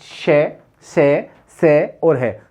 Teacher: इन व्यंजनों के उच्चारण में वायु हमारे मुख से जब निकलती है तो घर्षण के साथ बाहर आती है, गर्म हो जाती है। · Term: संघर्षी व्यंजन